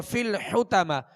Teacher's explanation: اور فی الحتمہ حا اور طا، حا کو وسط حلق سے ادا کریں گے اور طا کو پر پڑھیں گے. اور آخر میں جو تا ہے یہ گول تا ہے.